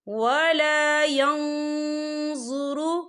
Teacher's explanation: ولا يكلمهم الله ولا ينظر، یہ دیکھیں ولا ین، یہاں نون ساکن ہے، نون ساکن کے بعد جو ہے ضا آ رہا ہے، اور ضا جو ہے اقفا کا ورڈ ہے تو ہم یہاں اقفا کریں گے، نون ساکن کی آواز کو ناک میں چھپائیں گے۔